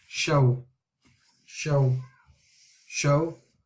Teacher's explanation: With the waw, we need to ensure that when we are landing on the sound of the waw, then we are making a full circle with our mouth, with our lips, so we can say the word properly, or the sound properly.